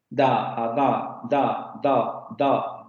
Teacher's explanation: la lengua se va a pegar a los dientes ahí es donde se va a mantener el aire para luego sacarlo de manera abrupta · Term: oclusiva sonora